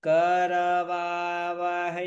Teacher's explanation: कर ऊंचे स्वर में बोलिए